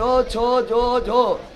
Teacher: जब तक ये जीभ तालू में ऊपर में नहीं सटेगा, तब तक तुम चो छो जो झो नहीं बोल सकता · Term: चवर्ग